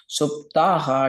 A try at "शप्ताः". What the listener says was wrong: First time, after the comma Shaptaha. You said Shupta. Shaptaha.